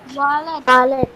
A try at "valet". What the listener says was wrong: V. V-A-L-E-T is pronounced valet. T is silent there. Okay, it's pronounced valet. W-A-L-L-E-T. That's pronounced wallet. W-A-L-L is pronounced wall.